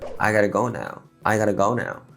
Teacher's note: since T sound becomes R sound when followed by vowel, it becomes sound like a gotta.